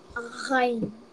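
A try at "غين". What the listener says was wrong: The A sound should be there, man. It's Ghain. Top throat, alright.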